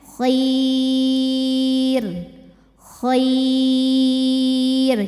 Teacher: r-nya tipisin ya karena sebelumnya ya mati jadi ini bukan Khair jangan ditebelin nyantai lidahnya kir pokoknya kalau ada Ro dimatikan sebelumnya ya mati rnya tipis